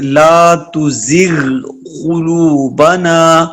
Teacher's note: غین کا مخرج ہے حروف ادنا حلق کا وہ حصہ جو منہ کے قریب ہے، اور قاف اقصی لسان سے. ان دونوں کی اصل میں فرق ہے.